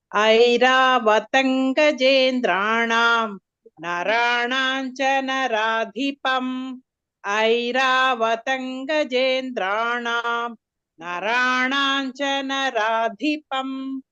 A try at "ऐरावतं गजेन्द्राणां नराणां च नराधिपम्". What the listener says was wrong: Good. Next.